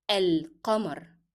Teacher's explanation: Here the sound of lam is very appearing, and that's because lam itself is carrying sukoon and it is not followed by a shadda letter. So you normally pronounce the sound of lam.